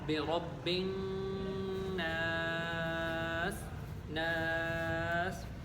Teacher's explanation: الف مدہ کو ہم 1 سیکنڈ کی مقدار یا 1 الف کی مقدار اس کو کھینچ کر پڑھیں گے